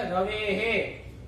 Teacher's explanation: રવે હે. રવે એ પાછળ હોય વિસર્ગ હોય તો એનું ઉચ્ચારણ એ જેવું થઈ જાય. રવે હે.